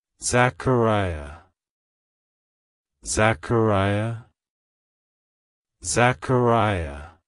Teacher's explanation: emphasize the kair syllable and make sure to stress the ee sound at the end